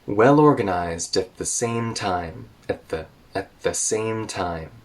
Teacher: at the is kind of reduced in the sentence rhythm, so it's spoken very quickly, and the T in at turns into a glottal stop or just connects to the TH in the.